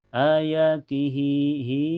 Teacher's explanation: Huruf hidup sebelumnya yaitu harakat kasrah di ti huruf hidup ee setelahnya harakat ee fathah di wa. Jadi cara bacanya panjang cukup dua harakat ya dan tidak ada hamzah. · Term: mazilah qasirah